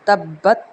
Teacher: یہاں پہ بھی قلقلہ ہے کیونکہ با ہے، با حروف قلقلہ میں سے ہے